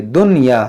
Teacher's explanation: دنیا، دنیا، تو یہ دنیا صحیح نہیں ہے، اس کو ہم دنیا پڑھیں گے، دنیا، اس نون ساکن کی آواز ظاہر ہوگی